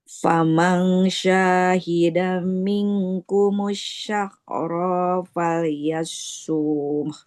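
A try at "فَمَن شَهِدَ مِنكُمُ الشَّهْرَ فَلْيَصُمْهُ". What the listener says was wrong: Oke, panjang pendeknya. Fama syahida. Nggak ada yang panjang. Fama syahida minkumus syahra. Panjang pendeknya.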